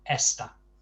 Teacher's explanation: Esta being a word ending in a, would of course, according to the nose rule, have the stress on the penultimate syllable, which in this case is the first syllable